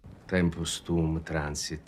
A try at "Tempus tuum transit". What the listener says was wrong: Sounds great.